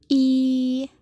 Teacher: terdapat di bagian depan tidak bulat dan berbunyi tinggi